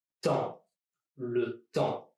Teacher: Here, the P and the S are both silent, which gives me only temps and not temps.